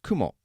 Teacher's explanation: both spider and Cloud are pronounced Kumo they're both exactly the same in fact even the pitch accent is high low